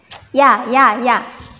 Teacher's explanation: Kalau bahasa Arab ya ya lebih tipis ya ya ya ya dia keluarnya dari tengah lidah